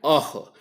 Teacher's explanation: अकुह और विसर्ग का उच्चारण स्थान कंठ होता है